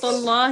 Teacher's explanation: یہ لام جلالہ ہے، اس کے ساتھ فتح کے ساتھ اس کو پر کر کے پڑھا جائے گا